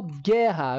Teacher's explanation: meu u aqui pessoal ele não é pronunciado